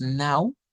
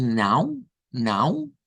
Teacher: si solo decimos now, no se escucha nasalizada. pero cuando decimos now, now, ahí ya suena la nasalización